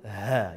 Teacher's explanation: Ha yang kita ketahui ha, orang kita panggil ha dada kan. Sebenarnya dia di kerongkong kita ataupun di tekak penghabisan hampir dalam rongga dalam tekak kita